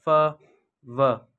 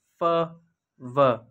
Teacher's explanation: The sound produced by bringing the lower lips to upper teeth. For example फ व, ये sound produce करते हुए हमारे अपर लिप और लोअर टीथ कांटेक्ट करते हैं और साउंड प्रोड्यूस होती है फ व, और इसे लेबियोडेंटल साउंड कहते हैं।